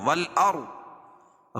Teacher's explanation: رائے ساکنہ سے پہلے زبر یہ پیش ہو تو را کو پور پڑھیں گے اور ضاد کو بھی پور پڑھیں گے کیونکہ حروف مستعلیہ میں سے.